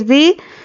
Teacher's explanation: ज़ाल को नरमी से अदा करना है और एक अलिफ के बराबर खींचकर पढ़ना है।